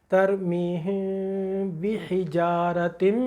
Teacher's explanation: हमने आवाज़ को अपनी नाक में ले लिया, बांसे में एक गुन्ना होगा , लेकिन वो नून मुशद्दद मीम मुशद्दद की तरह का गुन्ना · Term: इख्फा शफवी का गुन्ना